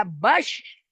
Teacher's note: Kalau shin itu nggak ditempelin. Tapi di sana ada nanti sifatnya tapashi. Jadi ada angin yang keluar di sana.